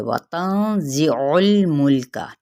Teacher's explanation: عین کی پیش کو وسط حلق سے ادا کرتے ہوئے لام کے ساتھ ملائیں گے، پھر اگلے لام کو بھی نہیں ہلانا، اسی طرح پیچھے والے کو بھی نہیں ہلانا.